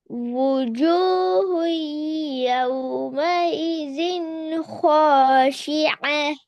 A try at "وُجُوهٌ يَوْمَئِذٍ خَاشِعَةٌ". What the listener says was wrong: கடைசியில ஹேட பெரிய ஹே சவுண்ட் வரணுமா? கொஞ்சம் வருது இல்ல.